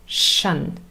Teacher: there are many words in English that end in t i o n and the pronunciation is shun with a sh fricative